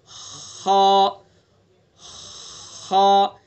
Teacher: खा को भी हलक से ही अदा करेंगे, लेकिन मुंह की तरफ से ऊपर को आगे की तरफ से अदा करेंगे। खा खा। बीच से हा अदा हो जाएगा, ऊपर को आ जाएंगे थोड़ा सा तो खा अदा हो जाएगा।